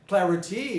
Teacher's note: So clarity makes the second syllable become a schwa, containing a schwa.